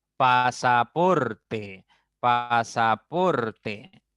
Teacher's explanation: ar por lo tanto es una palabra grave ollana pasaporte pasaporte la mayor intensidad está en por la segunda sílaba contando derecha izquierda